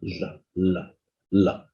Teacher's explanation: the air from the lungs goes out through the sides of the tongue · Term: lateral sound